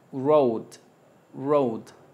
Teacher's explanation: La o tiende a comprimirse como si se fuese a transformar en una u